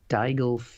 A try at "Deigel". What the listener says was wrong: That's not his name, is it? Whatever you're saying is not his name. Yeah, I'm sure he pronounces it at least quicker than that. Goes up less at the end when he says it.